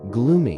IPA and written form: ˈɡluːmi (gloomy)